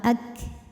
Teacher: untuk Kaf yang sukun ee anginnya keluarnya setelah suara keluar